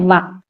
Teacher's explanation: మనం ఉచ్చరించేటప్పుడు మన దంతాలు మరియు మన పెదవుల సహాయంతో పలికేది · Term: దంత్యోష్ట్యం